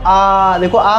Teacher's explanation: विवृत स्वर में क्या होगा, मुख आपका पूरा खुला रहेगा